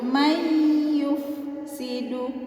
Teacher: awalnya dibaca may dikatakan dengung, yakni ditahan dulu teman-teman ya, bukan langsung may yufsidu, tapi may disitunya agak ditahan dulu, may yufsidu. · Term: idgham bi gunnah